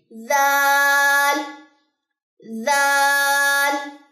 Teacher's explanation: اس کی ساؤنڈ کیسے ہوگی زال زال زال، بہت نرم ادا کرنا، اس کو کبھی بھی اس میں سیٹی کی آواز نہیں آنی چاہیے، زال زال نہیں، زا زا اوپر والے جو دو دانت ہیں ان کو جو ہے وہ زبان کی نوک لگے گی